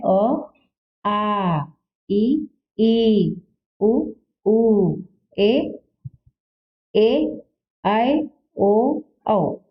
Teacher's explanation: दीर्घ स्वर यानी इन स्वरों को बोलने में इनसे अधिक समय या 2 गुना समय लगता है